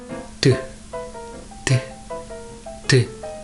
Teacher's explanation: To pronounce this sound, your tip should be attached to the gum behind upper teeth and release the air smoothly.